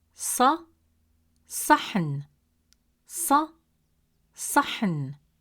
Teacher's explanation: Now let's look at Sad. It is a deep sound, pronounced from deeper in the mouth, with more pressure and emphasis on the tongue, pushed with more force from the back of the mouth.